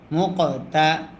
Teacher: মিম কফ পেশ মুক, কফে যদি সাকিন হয় কলকলা করতে হয়